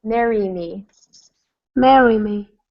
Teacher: What I want is a little bit more E sound in Mary, in all of them.